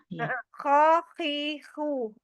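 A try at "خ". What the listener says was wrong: Nah, kurang sedikit lagi kotornya.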